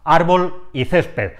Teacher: son palabras que tienen el golpe de voz en la segunda sílaba contando desde el final y terminan en la consonante l y en la consonante d